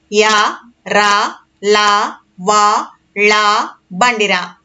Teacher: అంగిలి సాయంతో పలికే అక్షరాలను అంతస్థాలు అంటారు